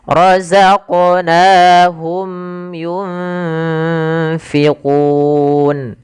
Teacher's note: nun mati bertemu fa, ada bacaan ikhfa. Ini usahakan disamarkan nunnya kepada huruf fa. Makhraj fa ada bibir gigi atas menempel dengan bawah.